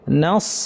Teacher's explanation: নাস বলার সময় নুনটা পাতলা কিন্তু সদটা ভার